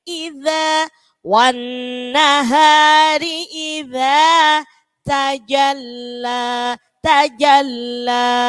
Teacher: Iza sama iza zalnya digigit.